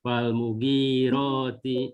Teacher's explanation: Jadi tidak falmugi, ya. Gi-nya yang dipanjangkan bukan yang mu-nya.